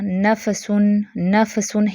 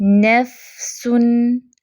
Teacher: ایک تو نون، فا، سین دونوں تینوں ہی حروف باریک ہیں تو ان کو باریک ہی رکھنا ہے۔ نفسن، فا پہ تھوڑی سی آواز بھی چلے گی، اس کو جلدی سے نہیں بند کر دینا، نفسن کہ ہلا دیں فا کو۔